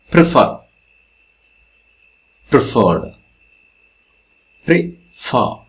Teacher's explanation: Stress comes here. So this is 2-syllabic word, prefer, and the stress comes with the fer